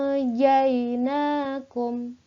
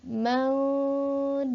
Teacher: bunyi yang disamarkan itu adalah bunyi nun sukun dan tanwinnya menjadi eng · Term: ikhfa